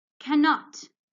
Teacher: When we pronounce it, we can only hear one sound of N, okay? Like it's only one N and not 2.